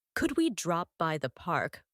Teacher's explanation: could we drop by the park with stress on by